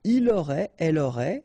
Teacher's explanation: final T not pronounced, so phonetically exactly the same form here